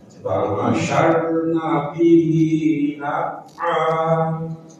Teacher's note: Ro sukun sebelumnya fathah maka wajib dibaca tafkhim tebal. Fa'asarna saw tekan saw tebalkan.